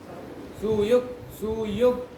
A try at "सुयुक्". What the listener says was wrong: यू दीर्घ कहाँ है? बोलो सुयुग। सु का है दीर्घ, बोलो यू का है दीर्घ। देखो अभी दीर्घ बोलो, सुयुग। दीर्घ नहीं बोल रहा है।